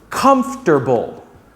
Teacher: although it has four syllables try pronouncing it with three syllables